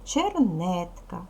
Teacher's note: наголошений другий склад перший склад і третій склад не наголошений